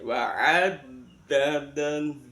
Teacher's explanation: Jangan lupa dalnya ditasjid dengan wa'addadah. Tepatnya dal di ujung lidah nekan pada keluarnya dua gigi.